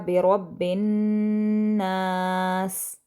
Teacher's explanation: नास जो है जो आ का साउंड है उसको हम 2 हरकत के बराबर लंबा करके पढ़ेंगे। तो इसको पढ़ा जाएगा बिरब्बिन नास। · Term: अलिफ मद्दा